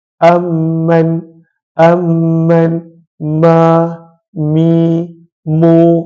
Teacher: adalah apabila kita rapatkan kedua-dua bibir kita rapatkan kedua-dua bibir maka bila kita rapatkan kedua-dua bibir maka daripada situ keluarnya huruf mim · Kata para ulama tajwid, makhraj mim adalah apabila kita rapatkan kedua-dua bibir. Kita rapatkan kedua-dua bibir.